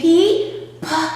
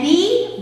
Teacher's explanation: And unlike the P, the B is a voiced consonant. P is an unvoiced consonant, and B is a voiced consonant.